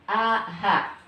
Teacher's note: Baik dia diucapkannya dalam keadaan fathah, kasroh, domah, bersyiddah atau sukun, maka dia akan getaran yang paling besar di tenggorokan itu harus berada di tenggorokan bagian bawah